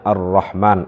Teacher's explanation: Jadi ro yang dibaca tafkhim itu ketika fathah dia, ro di awal kalimat.